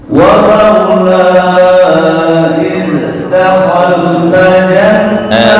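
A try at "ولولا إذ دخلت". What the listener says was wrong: Sebentar, untuk zal jangan qalqalah. Makhrajnya udah betul, tapi jangan dipantulan, bukan dakhal, enggak, itu yang kurang pas. Walaula dakhalta dakhalta.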